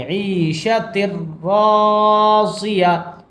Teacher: تشدید کی وجہ سے تا کو را میں ملا کر پڑھیں گے